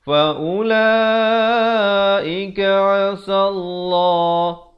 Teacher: Lafzu jalalah dibaca tebal 2 harakat.